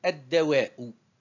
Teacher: la lettre solaire en vert, elle est doublée au niveau de la prononciation